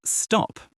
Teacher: It's a crisp, often unreleased stop where you just hold the air briefly. · At the end of words, especially for British English, that aspiration is usually reduced or even absent. So it's stop, not stop her.